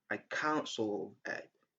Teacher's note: The sound t is silent in I can't solve it.